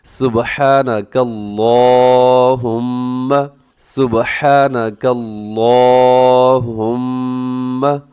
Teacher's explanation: اللہم کا لام ہم نے موٹا رکھنا ہوتا ہے، اس کے اوپر کھڑا زبر ہے، اس کو بھی ہم نے لمبا کر کے پڑھنا ہوتا ہے